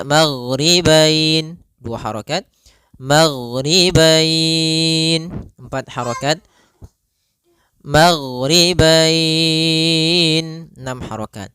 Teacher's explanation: Disebabkan karena adanya huruf fathah dan huruf bertemu dengan huruf ya sukun atau waw sukun di akhir bacaan. Panjang untuk mad lin sendiri kita boleh panjangkan 2 harokat, boleh 4 harokat, boleh pula 6 harokat